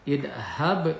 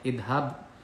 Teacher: huruf mati dibaca qalqalah mantul, namun pantulannya sedikit karena di tengah kalimat. Idhab, idhab ini qalqalah sugro, memantul dibacanya.